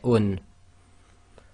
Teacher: Dhammatain is actually the oo sound with the noon sound added to it, so you get un.